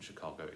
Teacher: the stress in Chicago is on the middle syllable